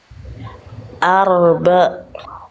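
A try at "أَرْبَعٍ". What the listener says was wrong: Nah, ainnya tegaskan, arba. Nah, ainnya kurang tegas Bunda. Tekan lagi tengah tenggorokannya, itu masih arba. Bukan ba, tapi ba. Ba di tengah tenggorokan Bunda.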